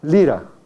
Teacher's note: El ápice de la lengua toca la región alveolar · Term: Consonante alveolar